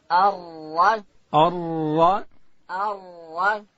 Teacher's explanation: ار او ډکه بیا وایو. را ادا کیږي د ژبې کناره به لوړې ورې ته ورولو. ار شونډان ته به حرکت نور کو چې بیا دلته واو پشکې پیدا کیږي.